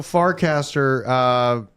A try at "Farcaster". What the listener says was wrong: I keep hearing a silent T every time you say that. Fartcaster.